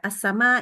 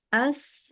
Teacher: Ada Mad ketemu Hamzah bacanya jadi panjang gitu ya